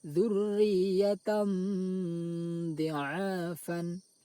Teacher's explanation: suara tanwin dibaca samar antara izhar dan idgham lalu didengungkan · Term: ikhfa